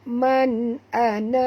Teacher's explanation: qalqalah kubra. Ya, mesti bunyi lantun yang agak keras